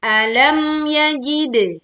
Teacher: tekan mim sukun tanpa memantulkan suara. "Yajid", memantulkan dal sukun dengan suara pantulan yang jelas, dan suara miring.